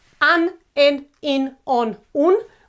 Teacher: these vowels, final vowels, a, e, I, o, u, are accentuated, okay? So the word has the stress on that last syllable.